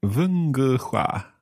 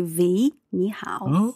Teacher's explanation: Yeah, that's the accent of Northern Chinese. Okay, so the W sound becomes more like a V sound